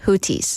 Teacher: they claim that it's Houthi because the TH is a T sound